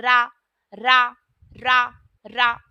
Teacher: रा जब हम बोलते हैं तो हमारी जो जीव है उसमें कंपन होता है जिनके उच्चारण में जीव बेलन की भाति लपेट खाती है रा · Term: लुंठित व्यंजन